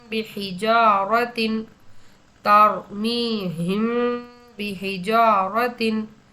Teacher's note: அதே நேரத்துல குண்ணா மற்றும் இக்பா செஞ்சு ஓதணும்.